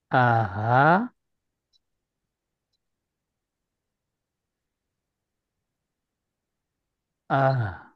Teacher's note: mengeluarkan seluruhnya dari dari rongga dada seperti untuk urha tib Kemudian untuk huruf hamzah juga demikian ya dia keluar dari dari ee pangkal tenggorokan